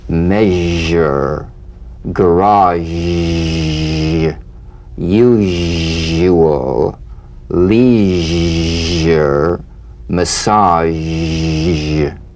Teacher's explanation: Make the whispering SH and add vocal resonance. All suggestion of the SH must vanish. · All suggestion of the SH must vanish. Feel the SH overridden by the deep rumbling vibrations of the ZH, resonating against the teeth and the tip of the tongue. If you don't feel your teeth vibrating on this sound, you're not making a good zh.